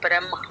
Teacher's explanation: ఒత్తు వచ్చినా కూడా ముందు ఒత్తుని పలికి తర్వాత హ అని పలుకుతాం అన్నమాట బ్రహ్మ మ ఫస్ట్ పలికి హ తర్వాత పలకాలి